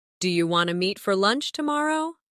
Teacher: In casual speech, do you want to often sounds like do you wanna?